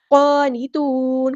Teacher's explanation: قاف ہمارا ہیوی پورا ادا کریں گے ، نون کو ہم سیکنڈ کر دیں گے وقف کرتے ہوئے،